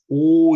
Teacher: 원순 모음이죠. 입술 동그란 소리. 오 이러면 입술 동그래지죠?